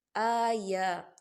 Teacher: کھڑی حرکات ہے، 2 حرکت کے برابر کھینچیں گے